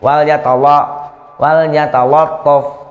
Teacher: Lato. Ya, la-nya tipis, to-nya baru tebal.